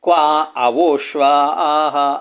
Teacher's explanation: ಕ್ವಾ ಮೇಲೆ ಹೇಳಿ ಮತ್ತೆ ಕೆಳಗೆ ಹೇಳೋದು. ಅಂದರೆ ಎರಡೂ ಇದೆ ಇಲ್ಲಿ. ಉದಾತ್ತತ್ವ ಧರ್ಮ ಅನುದಾತ್ತತ್ವ ಧರ್ಮ ಮಿಶ್ರಿತವಾದ ವರ್ಣ ಕೇಳಿಸ್ತಾ ಇದೆ. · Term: ದೀರ್ಘ ಸ್ವರಿತ